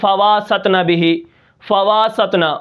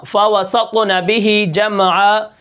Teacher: اس کے بعد اب اگر آپ کہیں واو کو بڑھا دیتے ہیں جیسے فَوَاسَطْنَ بِهِ، فَوَاسَطْنَ، فَوَسَطْنَ بِهِ جَمْعًا، ٹھیک ہے، آپ نے واو کو بڑھا دیا فَوَاسَطْنَ، تو اس سے معنی تبدیل ہو جاتا ہے، اور یہ لحن جلی کی ایک صورت ہے۔